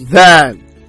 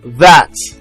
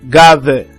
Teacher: it's a voice Dental fricative consonant sound